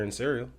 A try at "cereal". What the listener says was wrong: What? It sounded like you said Sarah.